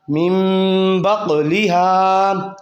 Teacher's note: جب نون ساکن کے بعد با آ جائے تو اقلاب کا قاعدہ جاری ہوتا ہے، تو نون کو میم میں بدل دیتے ہیں، تو میم زیر میم میم پڑھیں گے، میم با آدھی پڑھیں گے، میم نون زیر من، با قاف زبر باق، میم باق، لام زیر لی، میم بقلی، ہا الف زبر ہا، میم بقلیہا۔